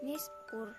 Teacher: takfim karena ro mati sebelumnya ada baris domah dan ro mati dibaca tebal